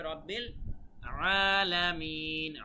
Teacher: আলামিন বলা যাবে না, বলতে হবে রব্বিল আলামিন, আইন গলার ভেতর থেকে